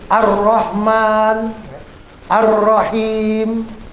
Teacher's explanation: Tapi kalau yang Al-nya tidak terdengar, nggak hidup, seperti Ar-Rahman, Ar-Rahim, ya, itu namanya Al-Syamsiyah.